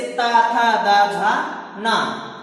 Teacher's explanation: वे वर्ण जिनके उच्चारण में जीवा दांतों का स्पर्श करती है, दांत को स्पर्श करते हुए उच्चारित करती है